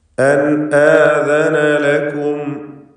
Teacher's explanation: അൻ ആദന സാക്കിനത്തായ നൂനിനെ ഇൽഹാർ ഹൽഖി നൽകി മണിക്കാതെ വെളിവാക്കണം.